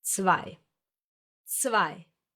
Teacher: Most native English speakers would pronounce this letter as W, but in German it's pronounced as a V, like in the English very or video or van.